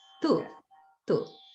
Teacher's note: It sounds a little bit like you're saying do, but that's a ta sound.